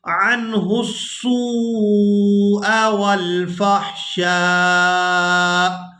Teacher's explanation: سین کو واو مدہ کے ساتھ ملاتے ہوئے کھینچ کر ادا کریں گے